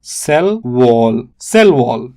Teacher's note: Stress falls on the second word.